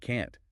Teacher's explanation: Can't never reduces. It keeps the aa vowel and has that abrupt stop quality from the t. So the reduction or lack of it is often the main clue for native speakers.